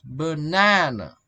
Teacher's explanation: For example, banana. Here, the first and the last syllable are weak, contain a, while the middle one is strong and stressed.